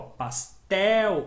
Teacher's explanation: o el é o mais forte, a oxítona